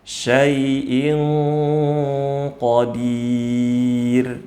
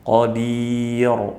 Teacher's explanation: huruf ro-nya ditipiskan, jangan ditebalkan. Qadir, ini keliru.